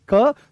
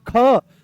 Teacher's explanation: तो जैसे ही आप बोलोगे क तो बड़ी सरलता से निकल आया। पर जैसे ही बोलते हो आप ख तो जोर लगाना पड़ा।